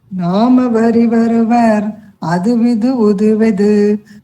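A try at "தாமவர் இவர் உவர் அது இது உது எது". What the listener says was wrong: கவனிச்சு படிங்கோ, பொறுமையா படிங்கோ, எழுத்தெல்லாம் பார்த்து படிங்கோ. நாம் வந்து ஃபர்ஸ்ட் லைன்ல தான் இருக்கு, ரெண்டாவது லைன்ல தாம். தாம் அவரி வருவர் அது இது உதுயது.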